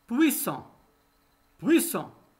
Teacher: Les deux S entre deux voyelles se prononcent S.